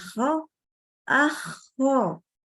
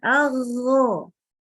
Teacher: Kalau kho, itu terhembus udara. Keluar udara. Kalau ghain tertahan. Au. Yang satu keluar udara, yang satu lagi ya, tertahan udaranya.